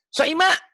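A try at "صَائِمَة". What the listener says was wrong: Pendek. Soima nggak ada yang panjang ya. Soima. Baca Quran nanti nggak usah gitu. Soima biasa aja.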